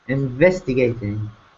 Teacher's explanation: we're going to stress gate but it's going to be a smaller stress it's a minimal stress